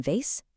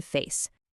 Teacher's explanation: And that vibration, that buzz is the only thing that's different between the V in vase and the F in face. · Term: voicing